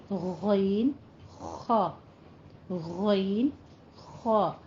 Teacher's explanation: अदना हलक, यानी हलक का ऊपर वाला हिस्सा, इससे गैन खा